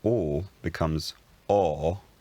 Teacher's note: The force vowel lowers to accommodate. So or becomes or, and then it unrounds to R.